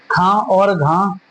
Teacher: महाप्राण, महा का मतलब क्या होता है अधिक, प्राण का मतलब क्या होता है वायु, जिनके उच्चारण में अधिक वायु निकलती है उन्हें क्या कहा जाता है महाप्राण